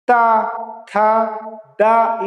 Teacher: ये जीभ आके ये सामने के दांतों में टकरा रही है अंदर साइड। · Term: दंतव्य